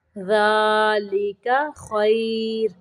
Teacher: یہاں پہ را کو ساکن کرتے ہوئے باریک پڑھیں گے کیونکہ را ساکن کے پیچھے یا ساکن ہے